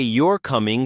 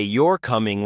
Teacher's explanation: I'm sure you're coming. But if I say you're coming rising tone, it becomes a question I'm not sure I'm asking. · If I say you're coming falling tone, that sounds like a statement.